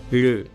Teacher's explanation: इसे बनाने के लिए आपको आपके टंग को आपके दांतों से जस्ट थोड़ा पीछे रखना होता है